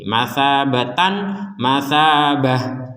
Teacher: Sekarang hukumnya adalah tak menjadi huruf H ketika berhenti. Masabatan, masabah, seperti itu kalau berhenti.